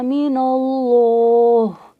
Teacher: ہا میں ہمس ہے، ہمس کا مطلب ہوتا ہے سانس کا جاری رہنا